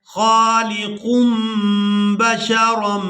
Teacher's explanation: یہاں تنوین میں جو نون کی آواز ہے اس کو ہم نے میم کے ساتھ بدل دینا ہے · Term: انقلاب